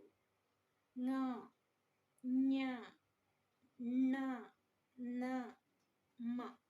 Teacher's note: ಮೂಗಿನ ಸಹಾಯದಿಂದ ಉಚ್ಚರಿಸುವಂತಹ ಅಕ್ಷರಗಳಿಗೆ ಅನುನಾಸಿಕ ಅಕ್ಷರಗಳು ಎಂದು ಕರೆಯಲಾಗುತ್ತದೆ